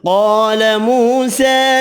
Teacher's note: قاف حروف مستعلیہ پر پڑھیں گے، الف مدہ واو مدہ کھڑی زبر ایک ایک الف کی مقدار میں کھینچ کر پڑھیں گے